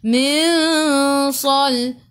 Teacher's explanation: Nun tak ada sukun, tengok sepasnya ada tak ya ataupun waw tak ada. Jadi ikhfa hakiki dengan 2 harakat bawa ke sisi huruf sad. Min sal. Sa su tebal.